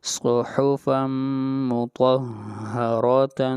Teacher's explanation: را ہے اس کو بھی موٹا پڑھا جائے گا اس لیے کہ را کے اوپر زبر ہے